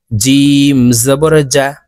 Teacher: জিম হরফ জিহ্বার মধ্যখান থেকে উচ্চারণ হবে কারণ জিমের মাখরাজ জিহ্বার মধ্যখান থেকে হবে জিম জবর জা হা